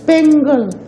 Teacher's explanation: Penagal, it becomes penagal. So the voiceless velar consonant ka changed to a voiced velar consonant ga under the influence of the preceding vowel retroflex, preceding voiced retroflex na. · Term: progressive assimilation